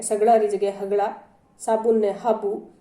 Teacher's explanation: मेवाड़ी में स और श री जगह ह रो प्रयोग वे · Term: स री जगह ह